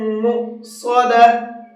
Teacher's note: انہا علیہم مؤصدہ، انہا نون کے اندر غنہ کریں گے، علیہم اس میم کے اندر غنہ کریں گے۔ مؤصدہ، یہ واو کے اوپر جو حمزہ بنا ہوا ہے یہ حمزہ پڑھا جائے گا، واو نہیں پڑھا جائے گا